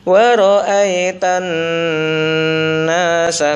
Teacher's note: Ini ada gunnah, nun bertasdid, maka ditahan dulu.